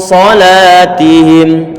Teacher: tebal pangkal lidah terangkat ke atas